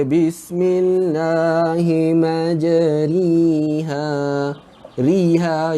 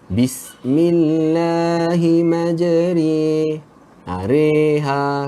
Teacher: Ra pun tidak, ri pun tidak. Kita baca re.